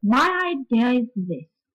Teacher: all weak syllables after the last stress syllable are said on a very low note as low as possible